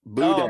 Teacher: you don't even pronounce the N